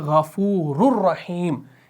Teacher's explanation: हम क्या पढ़ते हैं, गफ़ूरुर, रुर, रॉ रॉ पेश रुर, यानी यहाँ पर असल में था रॉ दो पेश रुन, नून की साउंड थी ना, लेकिन नून की साउंड आई नहीं, क्यों, क्योंकि बिला गुन्ना यहाँ पर इदगाम होगा, इदगाम कामिल होगा।